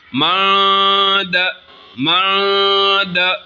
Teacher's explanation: اخفاء یعنی نون ساکن کو ناک میں چھپا کے پڑھیں گے